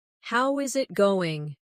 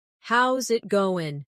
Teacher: The is disappears, and the final G in going often softens. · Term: connected speech